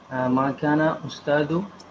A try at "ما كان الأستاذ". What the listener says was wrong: Remember to put al on ustad. So ما كان الأستاذ will be read ما كان الأستاذ.